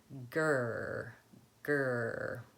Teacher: making that G sound and then holding it longer, and it's gonna sound a little bit like an R. You're not gonna let your tongue move forward, so try it.